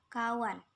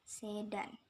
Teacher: perubahan nasal apiko alveolar n menjadi nasal apiko palatal n karena pengaruh secara regresif dari bunyi letup palatal d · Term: asimilasi regresif